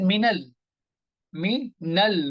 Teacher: we join with the lam. Alif is not being pronounced. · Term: Hamzatul Wasl